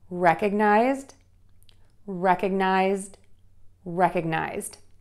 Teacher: because the word ends in a Z sound, which is voiced, we're going to end that word when we add the ED with a D sound, because the D is also voiced.